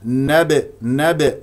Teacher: با ساكنه مقلقله قلقله صغرى لان في وسط الكلام